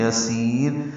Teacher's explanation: سین باریک آواز سے پڑھیں گے اور لمبا کریں گے ، اس کو صفیر کی آواز سے لمبا کریں گے، آگے